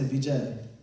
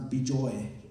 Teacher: in Bengali, you say O instead of A. It's very common.